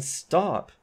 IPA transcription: ˈstap